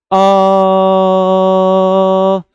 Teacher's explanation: अ शुरू से लेकर के एंड तक हमारे मुख से जो ध्वनि निकल रही थी वो एक ही थी।